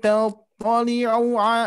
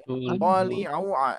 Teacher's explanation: hati-hati ini tidak kepanjangan, tidak ada mad Bu ya, tidak ada domah di sini, jadi tidak dipanjangkan. Tattali'u langsung ya.